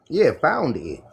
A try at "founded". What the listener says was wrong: you got to put the ed in the end of it, bro. Founded it, did it.